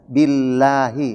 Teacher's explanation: nama Allah lafzul jalalah didahului oleh kasrah billahi maka penyebutannya tipis